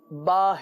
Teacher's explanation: تو با جو ہے یہ دونوں ہونٹوں کے تر حصے سے ادا ہوتا ہے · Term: با کا مخرج